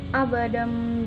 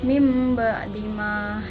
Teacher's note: apabila nun sukun atau tanwin bertemu dengan huruf ba cara membacanya dengan menyuarakan huruf nun atau tanwin menjadi suara mim dengan merapatkan dua bibir serta mendengung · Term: iqlab